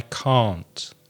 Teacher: The T at the end of can't is not stressed very often, and it's difficult to hear the T at the end.